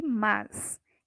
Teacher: no mas, eu não tenho som de is, eu tenho som de s, né? Mas se fosse a palavrinha mais, contrário de menos, aí teria esse som de iz.